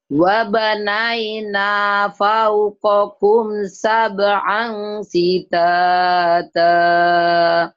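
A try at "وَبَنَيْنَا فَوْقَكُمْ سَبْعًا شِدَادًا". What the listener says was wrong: Shinnya sama dalnya shidada jangan dijawain. Wabanaina fauqakum sab'an shidada. Wabanaina. Dada jangan digituin, biasa aja disundain. Shidada.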